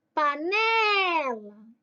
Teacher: A penúltima sílaba é forte. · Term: paroxítona